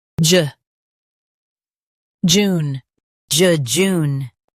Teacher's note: Stress june and keep juh light.